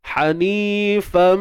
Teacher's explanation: Sempurna. Sebab mim tu bersabdu, maka dengungnya tu dia berada pada tahapan yang sempurna. Gunnah musyaddadah.